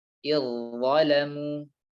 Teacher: Zal dan tha makhrajnya sama di ujung lidah bertemu dengan ujung gigi seri atas.